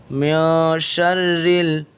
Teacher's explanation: نون کو ناک میں چھپائیں گے یہاں پر، اس لیے کہ یہاں پر اخفا ہوگا۔